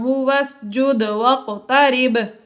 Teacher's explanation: دال قوف اور با حروف قلقلہ میں سے ہیں، اس لیے یہ تینوں ساکن ہیں. یہاں پر ہم نے قلقلہ ظاہر کر کے پڑھا